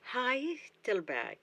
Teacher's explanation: It has 3 syllables. The first syllable is stressed, so Heidelberg.